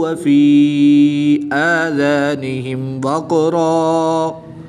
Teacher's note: قاف حروف قلقلہ میں سے ہے، تو اس پر قلقلہ بھی کریں گے اور دو زبر کی تنوین کو وقف کی حالت میں الف مدہ سے تبدیل کر کے پڑھیں گے۔